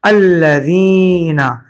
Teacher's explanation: زال کو ایک الف کے برابر کھینچا گیا ہے